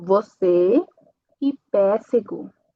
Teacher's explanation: Eu estou utilizando um sonido nasal, mas fechado. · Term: E fechada